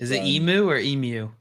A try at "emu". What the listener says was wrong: It's emu. There's no Y in there. It's emu.